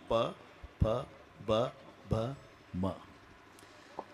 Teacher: मचा उच्चार वटाला ओठ लागल्याशिवाय होत नाही